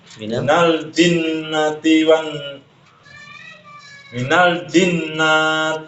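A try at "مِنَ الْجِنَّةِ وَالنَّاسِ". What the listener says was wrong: Nggak panjang. Nggak panjang. Minal jinnati wan nas, ditahan. Wan nas, ya. Tidak panjang nunnya, tapi yang panjang itu dengung gunanya. Guna itu dengungnya. Minal jinnati wan itunya yang panjang gunanya.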